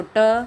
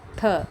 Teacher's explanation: ट में कम समय लगता है, ठ में थोड़ा ज़्यादा वायु बाहर निकलती है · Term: महाप्राण